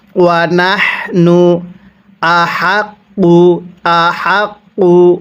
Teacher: গলার মধ্যে হালকা বাতাস বের করতে হয়, তাহলে এই হাটা সহি শুদ্ধ উচ্চারণ হবে।